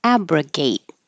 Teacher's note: we started with abrogate and hold that final T. So I put that little mark there to remind you to hold it.